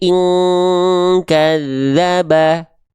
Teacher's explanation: nun sukunnya berjumpa dengan huruf kaf. Maka dengungannya akan menyerupai dengungan ang.